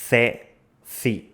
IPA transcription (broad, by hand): θe, θi